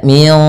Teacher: samarkan nunnya kepada huruf qaf, bukan lagi min qablikum, tapi kita samarkan ke qaf dan ditahan gunnahnya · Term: ikhfa